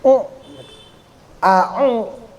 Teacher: Agak kayak orang bindeng ngucapinnya ya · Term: ain